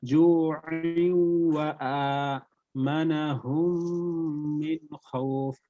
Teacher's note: তাহলে আইন ওয়াও দুই জের আইউ, এরপর ওয়াও এর উপর জবর, তাহলে ওয়া জবর ওয়া, জু'উ ওয়া, এরপর হামজার পর খারা জবর, এক আলিফ পরিমাণ টেনে পড়তে হবে